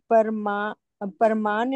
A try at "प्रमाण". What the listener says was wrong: आधा है प्र प्र।